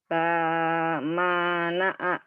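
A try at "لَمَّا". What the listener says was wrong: La-nya doang yang panjang.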